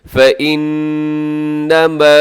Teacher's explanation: نون مشدد ہے. اب یہاں غنہ کیجیے گا.